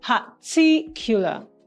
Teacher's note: The word particular has the stress pattern on the second syllable